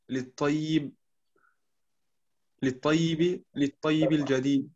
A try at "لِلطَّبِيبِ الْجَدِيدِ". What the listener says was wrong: Da ist noch ein Ba. للطبيب الجديد.